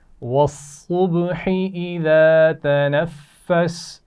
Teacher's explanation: स्वाद की आवाज़ में सीटी होती है या नहीं? होती है।